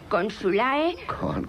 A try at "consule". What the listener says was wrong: No se pronuncia la A. E. Consule. Otra vez.